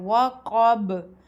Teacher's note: جب اس پر وقف کریں تو قاف پر ہلکا سا جھٹکا دیں گے، وقب، یعنی آواز منہ کے اندر اچھلے گی۔ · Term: قلقلہ